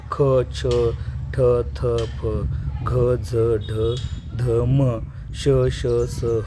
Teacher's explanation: ज्या व्यंजनात ह मिसळला जातो त्याला आपण महाप्राण असं म्हणतात. तर मगाच जे कॉलम बघितल आपण त्याच्यामध्ये दुसरा आणि चौथा स्तंभातले अक्षर जी आहेत ती महाप्राण येतात.